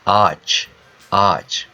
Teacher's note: the first R is a little bit longer